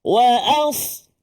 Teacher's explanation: Sad kena tebal, terangkat pangkal lidah, lidah kita menghampiri langit.